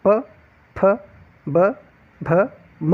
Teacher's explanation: जब इनका उच्चारण करो आप तो इनमें जो आपकी दोनों होठें होती है यह आपस में टकराती है, इसलिए इन्हें ओष्ठ व्यंजन कहा जाता है।